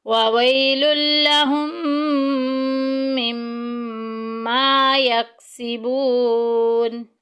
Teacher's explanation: وویل لہم، ہم میں دیکھیں میم ساکن کے بعد میم آ گیا، ادغام شفوی کا قاعدہ جاری ہو رہا ہے، پہلی میم کو دوسری میں مدغم کر دیں گے اور اس کے آگے پھر میم مشددہ غنہ کریں گے